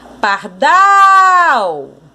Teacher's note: A sílaba mais forte, a sílaba tônica, é o dal.